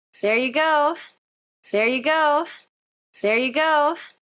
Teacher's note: going up in Pitch going up in energy and volume